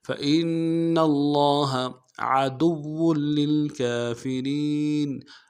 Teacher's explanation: عدو میں عین کو موٹا کریں گے، دال کو واو کے ساتھ ملانا ہے، واو کے اوپر تشدید زور دیں گے ، اور واو کی تنوین کو آگے للکافرین کے لام کے